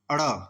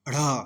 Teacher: सघोष का मतलब जे वे वर्ण जिन्हें बोलने पर स्वर यंत्रियों में कंपन होता है, दोनों ये सघोष हैं, परंतु अड़ अल्प प्राण है और ढ़ महाप्राण है।